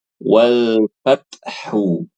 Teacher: wal ini bukan Qalqalah ini sifat Hames namanya